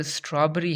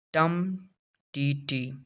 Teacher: In English language, a versification, a strongly stressed syllable followed by two weak ones. इसके अंदर दो syllable वीक होते हैं और एक सिलेबल स्ट्रेस्ड होता है। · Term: डेक्टाइल